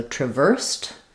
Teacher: Um where that E D sound is going to sound like a T as well. So stress on the ver and then the E D says T.